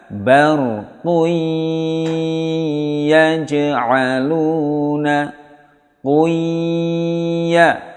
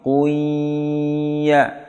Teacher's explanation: Tanwin bertemu ya, harus dengung yang lama. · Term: idgham bi ghunnah